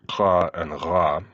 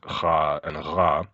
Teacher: The native uvular sounds kha and ra are in the process of being replaced by velar sounds kha and ra, which are easier for bilingual Russian speakers to pronounce.